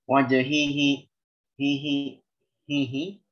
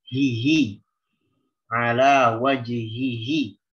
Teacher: masuk hidung karena harokat kasroh pada haknya tidak sempurna, tidak pipih secara sempurna. Harusnya hihi ala wajihihi.